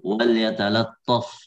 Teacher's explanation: lam yang kedua wal yatalattaf karena dia berdekatan dengan huruf tafkhim, maka jangan sampai lamnya di tafkhim juga